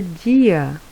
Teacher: o A é a vogal e o I é a semivogal, porque o som do I é um pouco mais fraquinho.